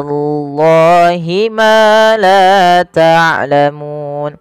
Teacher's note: Allah bila dia fathah dengan tebal